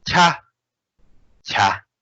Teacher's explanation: cha goes like high tone